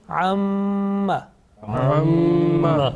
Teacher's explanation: there is a sustained continuous nasal sound, okay, about 2 seconds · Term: mim gunna